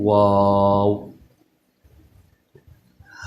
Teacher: واو کا جو مخرج ہے یہ دونوں ہونٹوں کی گولائی سے ادا ہوتا ہے، یعنی شروع میں بھی اور آخر میں بھی اس میں دونوں ہونٹوں کو گول کر کے پھر ہم اس کو پڑھتے ہیں واو۔